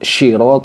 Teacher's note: ketukar dengan syin jadi sirot jadi terlalu tebal seperti itu sirot jadi sifatnya bukan safir lagi tapi tafasyi jadi nyebarnya suara